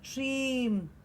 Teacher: it's stream with a very, very short s in the beginning of it.